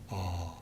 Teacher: the tongue is back and the lips are not rounded but more open